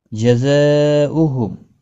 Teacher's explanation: جزاؤهم بڑی مد ہے، مد متصل 4 الف کی مقدار کے برابر کھینچ کر پڑھیں گے